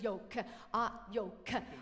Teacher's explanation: the way that she pronounces it is she adds the schwa vowel right the the schwa is the unstressed aspect of a word